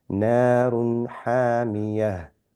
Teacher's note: Drop the un sound and the 2 dots and just read it as a ha. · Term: ha with sukoon